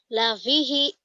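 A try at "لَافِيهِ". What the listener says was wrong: Panjang. I-nya pendek. Ini kenapa panjang? Ini yang dikatakan matobi'i nanti ya. kasroh ketemu ya mati.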